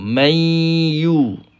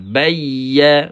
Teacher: kena bezakan sebutan idgham maal ghunnah dengan ya yang bersabdu